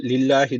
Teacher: buradaki Allah lafzı arkadaşlar ince okunması gerekiyor